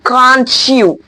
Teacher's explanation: you can hear the ch sound, a simple ch sound at the middle of the can and you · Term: joining part